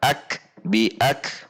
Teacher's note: Selanjutnya bi ak kaf punya sifat syiddah tertahan, kemudian ada udara setelahnya ketika sukun. Ak, tetapi urutannya adalah tertahan dahulu baru keluarnya udara.